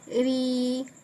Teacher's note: لیکن میں نے پہلے یہاں پر زیر کے ساتھ پہلے تو را پڑھا لیکن جب حرکت ساتھ ملا دی را کھڑا زیر تو پھر اب میں باریک پڑھوں گی. را کھڑا زیر ری کیونکہ زیر ملنے سے کیا ہو جاتا ہے؟ را باریک ہو جاتا ہے